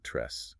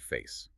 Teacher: The combination of a mid-level jaw drop and a fronted tongue unequivocally identifies the sound as the phonetic E, the mid-front unrounded vowel. It is the exact same vowel sound found in the Spanish word tres, or the English word face.